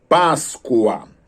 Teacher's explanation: Então, as vogais O e A estão na mesma sílaba. Aí trata-se, então, de um ditongo